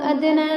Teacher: ادنا میں دال جو ہے حروف قلقلہ میں سے ہے، یعنی اس کو پڑھتے وقت اس کے مخرج ٹکر کھا کر الگ ہوں گے، اس کی آواز جو ہے پلٹے گی۔